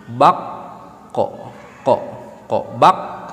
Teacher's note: Jadi ketika kita mengucapkan huruf qaf, yang nempel itu cukup pangkal lidah saja, cukup lidah bagian dalam saja. Lidah bagian tengah, lidah bagian pinggir, lidah bagian ujung itu tidak perlu nempel, nanti akan diperkuat sama sifatul huruf.